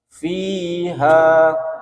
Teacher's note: panjang fi-nya karena itu namanya mat tabi'iyah. Fi panjang kan, ha hanya juga panjang namanya mat tabi'i alif.